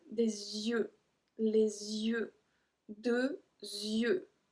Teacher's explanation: the pronunciation at yeux is always with a Z in front of it because of the link